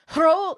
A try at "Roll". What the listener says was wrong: You tried to roll your R.